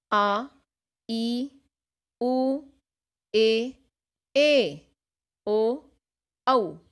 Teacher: गुरु वर्ण, इनके उच्चारण में या कह सकते हैं कि बोलने में लघु वर्णों से दुगुना, डबल 2 मात्राओं का समय लगता है।